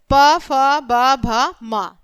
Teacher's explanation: तो यह इनको बोलते समय किसका यूज हो रहा है? होठों का। तो यह हो गए हमारे ओष्ठ व्यंजन।